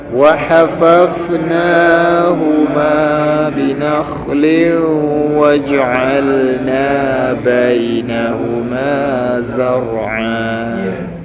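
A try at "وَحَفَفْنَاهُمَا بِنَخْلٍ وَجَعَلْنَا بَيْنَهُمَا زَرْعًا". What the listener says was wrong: Huruf mati fau wa hafna. Jangan pendek sangat bunyi dia.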